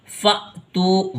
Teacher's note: حمزہ ساکنہ جب بھی آئے گا تو اس کے اندر جھٹکا لگتا ہے